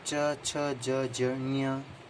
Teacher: इनको क वर्ग को कंठ से, च वर्ग को तालव्य, ट वर्ग को मूर्धन्य व त वर्ग को दंते कहा जाता है।